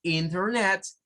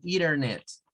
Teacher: Es una mañita que tienen los norteamericanos de quitar la T cuando aparece a la par adelante tiene una N, o sea, NT. Borran la T y solo pronuncian como doble N.